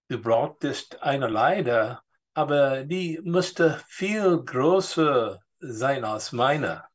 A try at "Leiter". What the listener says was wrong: Be careful with the pronunciation of T and D. They're quite close in terms of mouth position, yeah? Because leider means unfortunately, yeah? It's very important to say leiter, leiter.